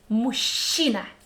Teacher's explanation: Sound sh again. So combination of letters ж, ч, and we come up with sh again.